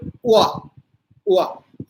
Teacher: होठों पे अवरोध होता है, लेकिन होठ पूरे नहीं बंद होते, बाहर को फैल जाते हैं और उनसे हवा निकल जाती है। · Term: अर्धस्वर